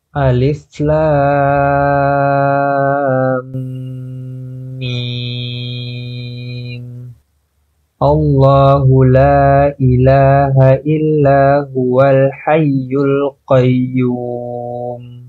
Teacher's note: Antum bacanya seperti biasa baca Alif Lam Mim mimnya enam harakat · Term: mimnya 6 harokat